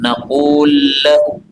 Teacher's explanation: lam ketemu lam pada ayat 40 naqul lahu boleh idgham